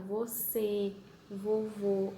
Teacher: É tudo um som fechado. Você, vovô. A gente não abre muito a boca pra falar.